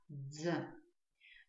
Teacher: Для того, чтобы правильно его произнести, нам с вами нужно постараться произнести звуки «д» и «з», как будто бы это один звук «дз»